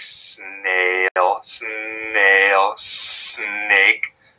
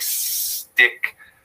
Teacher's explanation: the s is produced in the alveolar region at the top part of your mouth behind your front teeth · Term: co-articulation